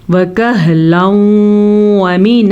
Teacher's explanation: تنوین کے بعد یمون میں سے واو آیا ہوا ہے تو ہم ان دونوں کو آپس میں ملائیں گے اور غنے کے ساتھ پڑھیں گے. اسے کہتے ہیں ادغام بالغنہ.